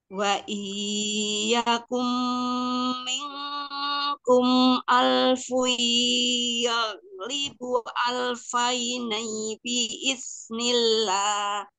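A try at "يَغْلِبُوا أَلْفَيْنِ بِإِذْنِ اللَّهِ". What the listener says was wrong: Ya, ya libu, panjangin hingga empat, yuk.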